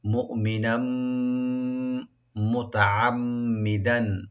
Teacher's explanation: নুন উপরে যে তানবিন আছে, তানবিনের সাথে যেহেতু তানবিন পরে মিম আসছে, এখানে একদম গুণা হবে